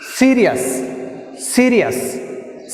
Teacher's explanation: I am pronouncing more force, first syllable is pronouncing more force